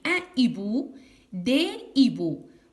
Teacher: Alors, ce que je veux dire, c'est que dans la première colonne, le H est aspiré. Le H est aspiré. Il n'accepte pas la liaison. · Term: H aspiré